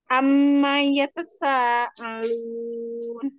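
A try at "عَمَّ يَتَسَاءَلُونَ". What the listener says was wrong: Ya tasanya tidak perlu cepat-cepat ya. Ya tasa gitu ya. Dinikmati aja. Amma yatasaalun.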